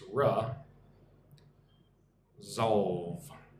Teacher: Put the emphasis on the second syllable